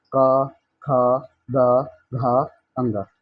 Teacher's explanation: जिन व्यंजनों की ध्वनियों के उच्चारण जीवा के पीछे भाग से यानी की कोमल तालू स्पर्श होता हो वो कंठ ध्वनियां होती है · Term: कंठ व्यंजन